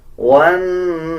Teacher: نون کے اوپر شد ہے، غنہ کریں گے اور غننے کی آواز کو ناک سے نکالا جائے گا